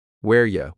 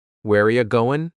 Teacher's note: We just changed it to ya, not you, but ya.